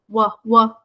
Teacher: The W sound is produced in the front with the lips rounded.